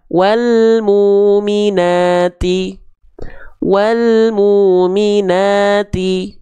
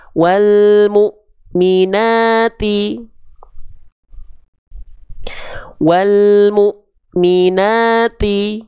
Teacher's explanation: Huruf yang bertemu dengan Hamzah sukun akan seolah terhenti